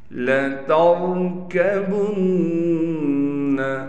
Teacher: را کو موٹا کر کے پڑھیں گے، نون پر تشدید ہونے کی وجہ سے نون پر ایک الف کی مقدار غنہ کیا جائے گا۔